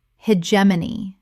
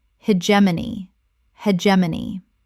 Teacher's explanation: 4 syllables with the stress on the second. The G makes a J sound.